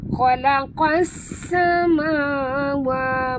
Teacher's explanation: bunyikan safir pada sin yang pertama yang mati